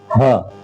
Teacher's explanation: हा बिल्कुल आखिरी वाले हलक से